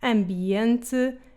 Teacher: the M can sound nasalized and different in words like ambiente